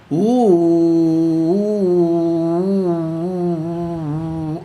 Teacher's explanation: വായ തുറക്കാതെയും മൂടാതെയും നിർത്തി ഉച്ചരിക്കുന്ന സ്വരമാണ് ഊ